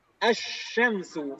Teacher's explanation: Dia langsung idgham ke huruf setelahnya. Langsung ke huruf shin.